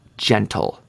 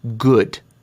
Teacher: A soft G makes a J sound, like the word gentle, as opposed to the hard G in the word good. The soft G is usually followed by E, I, or Y.